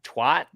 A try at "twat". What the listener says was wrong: Twat. No, you're saying twat as in that TWOT. Here's my theory. I reckon because obviously there's the SWAT team.